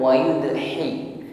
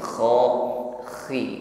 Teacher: ada gesekan di akar lidah dengan dinding tenggorokan sehingga ada bunyi dengkur